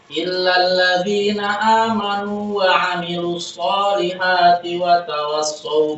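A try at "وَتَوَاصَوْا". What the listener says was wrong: Jangan masuk, jangan wanya panjang.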